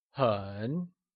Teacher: 很 is said with a falling, rising tone, or the third tone · Very translates to 很 and is also pronounced using a falling, rising tone